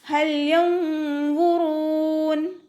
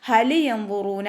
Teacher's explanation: ലാം കൊൽക്കല ലെറ്ററിലാത്തത് കൊണ്ട് ഹാഫ് സുക്കൂന് കൊടുത്തിട്ട് ഓതാൻ ശ്രദ്ധിക്കട്ടോ. ഹലി യംവുറൂന എന്ന് ഓതിപ്പോവരുത്.